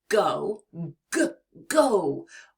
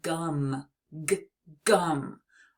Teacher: your vocal cords vibrate to make that deep sound just like in the beginning of the word go g go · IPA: /g/